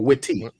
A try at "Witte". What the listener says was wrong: Wit, just Wit. The E is silent.